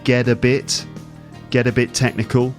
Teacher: Sometimes the T ends up sounding like a D sound. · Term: connected speech